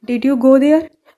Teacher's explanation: जैसे डिड यू गो बोल रहे हो आपका वॉइस थोड़ा नीचे है, जब देयर बोल रहे हो आपका वॉइस थोड़ा ऊपर है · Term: Rising intonation